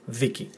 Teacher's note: So the emphasis on the first syllable: theeki.